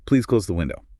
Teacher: When you tell someone to do something, like, please close the window. Commands are inherently definitive. You expect an action, so the falling pitch reinforces that certainty. So falling intonation basically signals, I'm done with this thought and I'm pretty sure about it.